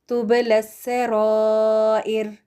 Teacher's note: را موٹا, را کے بعد جو الف ہے الف مد, اس کے اوپر بڑی مد لکھی ہوئی ہے, اور یہ یہاں پر یہ انڈیکیشن ہے کہ آپ نے 4 کاؤنٹس تک اس مد کو لمبا کر کے پڑھنا ہے, کیونکہ اس کے بعد حمزہ ہے